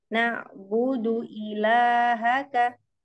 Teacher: Jangan dipanjangkan huruf dalnya. Nak budu, tapi pendek.